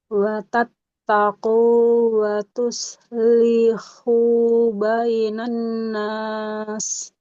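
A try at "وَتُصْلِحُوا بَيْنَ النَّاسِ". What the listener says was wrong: Nggak boleh watus lihu. Lamnya hati-hati nggak boleh panjang. Watus, huruf shotnya tebal. Watus lihu bainan nas.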